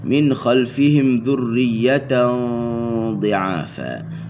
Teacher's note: Okey, dengunnya dengun yang tinggi. Sebab apa? Sebab jumpa huruf dad. Jumpa huruf dad, huruf yang isti'la dan itbaq. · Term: dengun tinggi